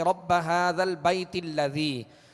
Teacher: درمیان میں یہ حمزہ گر جائے گا اور تا کو پھر لام سے ملائیں گے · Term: حمزہ وصلی